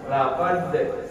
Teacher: nafas tertahan ya tidak berhembus tertahan terkunci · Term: huruf jahar